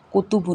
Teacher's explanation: کتبن میں بھی تا ہے، کاف ہے، کاف باریک، تا جو ہے تا ہے زبان کی نوک اوپر کے دانتوں کی جڑ سے لگا کر سختی سے ادا ہوگا